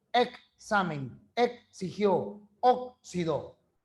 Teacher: segunda es una consonante está por allá va sola En cambio cuando está entre vocales representa dos sonidos ks